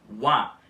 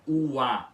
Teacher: o U faz um ditongo com o A e fazendo um som de wa, ao invés de ua como hiato